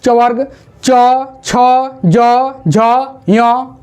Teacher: तालव्य से यानी जिन वर्णों का उच्चारण कहां से तालू से तालू यानी कि जीभ का ऊपर की ओर सीधे सट जाना